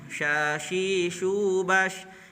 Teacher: Shin itu keluarnya ada di lidah bagian tengah.